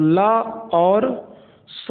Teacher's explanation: ला और सा का उच्चारण स्थान दंत से होता है